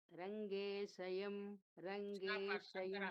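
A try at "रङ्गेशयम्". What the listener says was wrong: Middle of the tongue, upper palate, not from the tip of the tongue, sir. You have to take it from the middle of the tongue, upper palate. Rangeshayam. But you are pronouncing sha. It is not sha for Shanmukam, nor sha for Saraswati. It should be in the middle of the tongue. Sha for Shakti, Sharanam, Shariram. How you will say Russia? The country Russia. That sha has to come. Rangeshayam.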